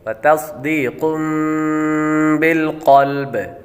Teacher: तनवीन के बाद बा आ रहा है तो यहाँ पर इक़लाब का कायदा लगेगा, गुना करके पढ़ेंगे